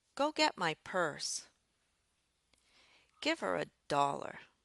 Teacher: a command uses a rising pattern followed by a falling intonation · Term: rising, falling pattern